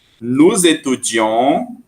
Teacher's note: Como começa com vogal, junta com o som de Z.